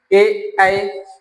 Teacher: ए ऐ जब हम बोलते हैं तो होठ गोल नहीं होते हैं।